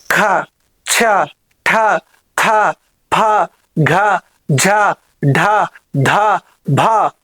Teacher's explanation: వాయువు ఎక్కువగా విసర్జింపబడుతుంది కాబట్టి వాడికి మహాప్రాణాలు